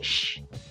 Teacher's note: ponemos la mano en la garganta, las cuerdas vocales no vibran. Entonces es como un sonido sordo.